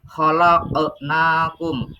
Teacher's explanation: huruf qaf itu adalah dibaca qalqalah